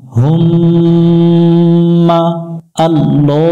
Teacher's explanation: মিমের উপর তাসদিদ এই মিমে গুণনা করা ওয়াজিব এটাকে ওয়াজিব গুন্না বলে গুণনা করতে হবে মিম জবর মা হুম্মা